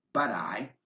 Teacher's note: when it comes before an unstressed vowel as in but I it gets pronounced like a light quick D sound